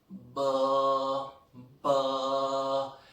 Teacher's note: When you have vibration here, okay, for example, I pronounce b, you could pronounce this b, b. When you pronounce b, so I'm sure you would hear a slight vibration